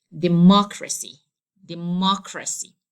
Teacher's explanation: as the rule says, I have to stress the third from last syllable